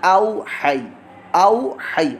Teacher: ہا جو ہے حلق کے درمیان والے حصے سے نکل رہا ہے · ہا یا زبر حی، یا ساکن سے پہلے زبر ہو تو یا لین ہوتا ہے. واو لین اور یا لین دونوں ہی یہاں پر موجود ہیں، دونوں کو ہی لمبا نہیں کرنا